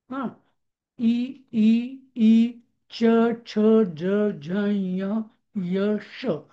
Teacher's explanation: आपल्या दातांच्या मागची जागा असते वरची त्याच्यावरती जीभ तिथं हवेचा आघात होतो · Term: तालव्य